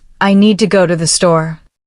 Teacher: English is a stress-timed language, which means some words in a sentence are said more strongly, while others are said quickly and quietly. In the sentence, I need to go to the store, the important words are need, go, and store. The rest are said more softly. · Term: stress pattern